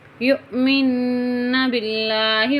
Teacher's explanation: یہ یا جو ہے حمزہ کے ساتھ ملا کے پڑھی جائے گی، جھٹکا دیں گے ہلکا سا۔ یؤمن باللہ والیوم الآخر وبعولتهن أحق بردهن في ذلك إن أرادوا إصلاحا۔